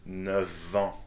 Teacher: that's a V sound that we use for liaison here